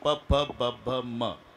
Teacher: प ब भ म चा उच्चार वटाला ओठ लागल्याशिवाय होत नाही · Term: वष्टे